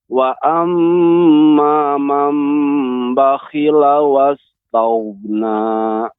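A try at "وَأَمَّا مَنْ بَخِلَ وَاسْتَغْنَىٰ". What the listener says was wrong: Jadi pertama diucapkan huruf ta secara sempurna, baru masuk ke huruf ghain.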